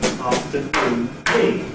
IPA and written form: ˌɑːftəˈnuːn ˈtiː (afternoon tea)